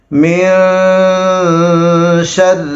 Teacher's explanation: را باریک ہوگی، یعنی را کو پتلا کر کے پڑھیں گے